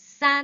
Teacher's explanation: 사안이 아니라 싼 된소리로 발음해 주세요